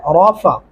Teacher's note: रा को मोटा और पुर करके पढ़ेंगे